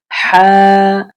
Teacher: এই হ্যাঁটা গলার ভিতর থেকে, হলকের ভিতর থেকে উচ্চারণ হবে। হ্যাঁ, হলকের ভিতর থেকে একটা বাতাস বের হয়ে আসবে। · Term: বড় হ্যাঁ